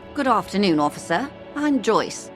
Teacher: her speech contains the TRAP/BATH split, does not have glottal stops, and uses non-rhotic pronunciations. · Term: received pronunciation British accent